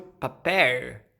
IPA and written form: papeɹ (papel)